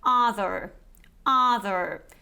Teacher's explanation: in the American variety you would actually pronounce this r at the end so you would say other other but here British variety so